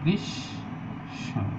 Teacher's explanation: অন্ত মফলা মানে শেষের মফলা উচ্চারিত না হয়ে ব্যঞ্জনকে দীপ্ত করছে, তাহলে গ্রীষ্ম।